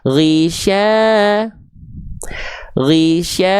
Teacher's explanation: Karena dia dua harakat berarti dua kali. Dua kali ayun.